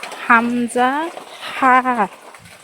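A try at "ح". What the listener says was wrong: হা হা, মানে গলায় চাপ হয়ে যাচ্ছে, আপনার গলাটা ছেড়ে বলতে হবে। হা।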